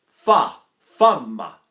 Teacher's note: Now these are another set of labial consonants, and I really have to if I'm going to do it in the Italian F, I have to put my lower lip out